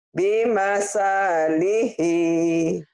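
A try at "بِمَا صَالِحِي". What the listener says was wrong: Iya, ini sa, tapi nggak ada yang panjang, Bu. Panjangnya cuma di ujung doang.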